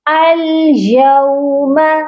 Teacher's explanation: یہاں پر جو واو ہے واو لین ہے، اس کو یوما او کی آواز نہیں آئے گی، یہ آواز یو میں جائے گی